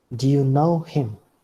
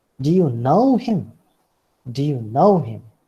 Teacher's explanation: Know is the word that you take on the rising level.